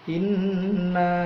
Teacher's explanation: Inna ada nun bertasydid namanya gunnah. Inna, pinna-nya itu mad tabi'i.